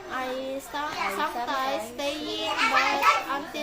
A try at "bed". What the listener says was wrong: Pendek. I sometimes stay in bed. Pendek ini bednya. Kalau bed panjang itu bermakna buruk. Kalau bed pendek itu bermakna tempat tidur. I sometimes stay in bed.